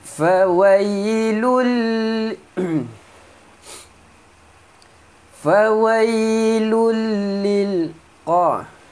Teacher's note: tanwin bertemu lam, masukkan tanwin ke dalam lam tanpa dengung